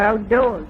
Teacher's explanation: So she does have a non-rhotic accent